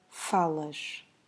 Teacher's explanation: because we have an s at the end, we have to do a soft sh at the end, so something like falas.